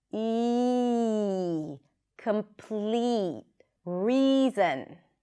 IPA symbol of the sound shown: i